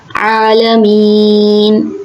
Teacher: اچھا، جب یہاں پہ مین میں نے کھینچ کر اس لیے وقف کیا کہ یہاں پہ ایک قاعدہ ہو رہا ہے جس کو کہتے ہیں یا مدہ. تو یا مدہ پہ جب ہم وقف کرتے ہیں تو اس کو حالت وقف میں 3 الف کے برابر کھینچتے ہیں